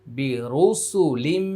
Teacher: তানভীনের পরে কিন্তু মিম চলে আসছে এটা হচ্ছে ইদগামি বা গুন্না